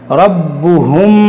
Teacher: इस रा को मोटा करेंगे, बा को खूब जमाव के साथ पढ़ेंगे, रब्बुहुम, फिर मीम साकिन के बाद बा है, यहाँ पर इख़्फ़ाए शफ़वी होगा, यानी यहाँ पर गुन्ना करेंगे